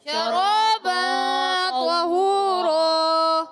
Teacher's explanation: طا کو موٹا رکھیں، قرآن پاک کا سب سے موٹا حرف ہے طا